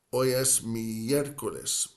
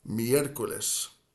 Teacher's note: miércoles has the accent at the very start of that second syllable with the E, the first E. Hoy es miércoles, 4 sílabas, miércoles.